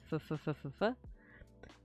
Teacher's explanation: A voiceless labiodental bilabial fricative. Labiodental, so that's lips and teeth. F. Yeah, so when I say f, it's my teeth touching my lips.